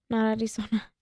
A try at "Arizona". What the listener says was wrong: Not Arizona. Why did you say it with the Spanish accent? Not Arizona. No, your accent slipped out.